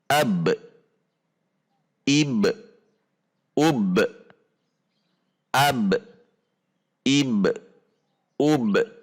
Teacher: Namun yang membedakan pada huruf ba memiliki sifat al-qalqalah, yaitu memantul. Sehingga saat sukun, setelah sifat syiddah atau setelah tertahan, lanjut kemudian sifat qalqalah atau memantul